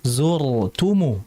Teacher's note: Jadi tadi kebalik ya. Harusnya yang tebal itu zur jangan maqabirnya. · Kita lihat kalau harakatnya dam atau fathah tetap dia dibaca tebal. Jadi zurtumu tetap dibaca tebal rnya hati-hati.